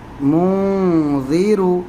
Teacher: میم، نون پیش من، ذال زیر ذی، منذی، را پیش رو، منذر۔ یہاں بھی نون کی آواز ناک میں چھپے گی کیونکہ ذال یہ حروف اخفا ہے